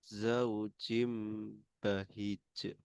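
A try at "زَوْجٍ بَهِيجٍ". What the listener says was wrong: Kemudian haknya dibaca panjang ya Mas ya. Ada ya sukun di situ. Jadi ada dengungnya juga iklabnya.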